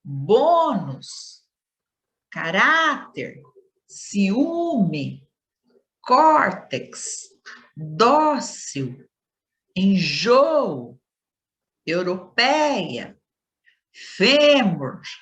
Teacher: aquelas que a penúltima sílaba é pronunciada com maior intensidade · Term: paroxítonas